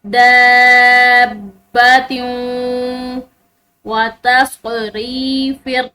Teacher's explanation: تا کی تنوین ہے اور اس کے بعد واو، 4 حروف یا واو میم اور نون میں سے ایک حرف واو ہے، تو یہاں پر ہم ادغام بالغنہ کریں گے